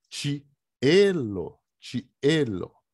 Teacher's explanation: O acento vai cair lá em E, porque o I separa do E, formam duas sílabas. Cada sílaba tem uma vogal.